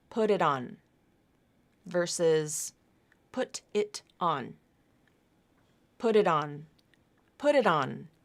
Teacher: pronunciation the flap and then we have that reification happening again the flap also reifies and moves over to the beginning of the next syllable or word